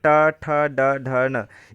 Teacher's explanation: ट वर्ग में ट ठ ड ढ न इसका उच्चारण स्थान मुर्धा है